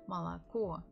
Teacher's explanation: The stress on the final O.